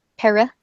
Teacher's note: the UH is unstressed so it becomes like a schwa it's very weak vowel